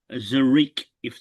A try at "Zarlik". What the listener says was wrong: Zalik. Zalik. There's an L in there, not an R.